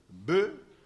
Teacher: Le B est labial et sonore.